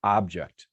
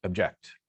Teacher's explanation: the first syllable is stressed in object, and the second syllable is stressed in object. Okay, object, object.